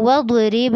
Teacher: वद्रिब बा पे आपने झटका करना है, दौत पे नहीं करना